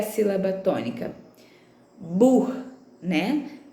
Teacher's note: Mas percebam que é uma palavrinha paroxítona, porque a penúltima sílaba é tônica